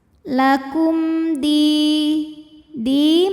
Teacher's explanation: Lakum di matobi'i dhahiri, karena ada ya sukun didahului baris kasrah, maka huruf dal panjang 2 harokat.